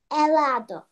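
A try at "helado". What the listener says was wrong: Еладо, muy bien.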